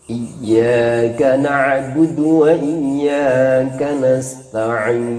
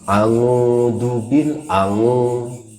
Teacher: Ain jangan jadi suara ngo.